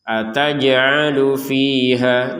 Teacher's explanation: Kalau jim ini masuk ini. Jim harus dipantulkan ini karena dalam keadaan sukun